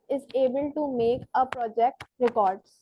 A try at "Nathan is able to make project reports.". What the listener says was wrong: एक तो प्रोजेक्ट के आगे आ लगाया जो कि मौजूद नहीं था, और फिर रिपोर्ट्स को रिकॉर्ड्स पढ़ दिया.